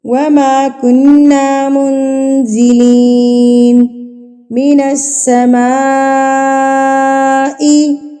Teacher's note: مد متصل، یعنی کہ بڑی مد جس کو ہم 4 حرکات کے برابر کھینچتے ہیں